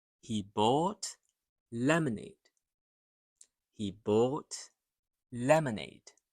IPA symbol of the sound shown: ə